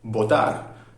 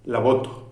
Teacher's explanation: mis labios no se cierran mis labios se acercan